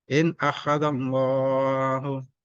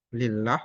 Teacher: Allah dibaca tebal, lafzul jalalah tafkhim karena didahului fathah